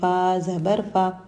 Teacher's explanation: فا، سامنے کے 2 دانتوں کے کناروں کو نیچے کے ہونٹوں کے گیلے حصے کو لگانے سے ادا ہوتا ہے۔ فا کو باریک پڑھیں گے۔ فا پر زبر ہے، نہیں کھینچیں گے۔